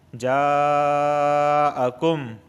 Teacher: جَاءَكُم یہاں پہ مد متصل ہو رہا ہے، ایک ہی کلمے کے اندر مد اور حمزہ دونوں واقع ہوئے ہیں۔ جاءکم، اس جا کو 4 الف کے برابر کھینچ کے پڑھیں گے